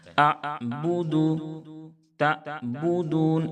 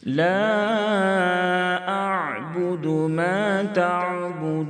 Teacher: عین پڑھتے ہوئے آواز کو ہلکی ہلکی جاری رکھیں گے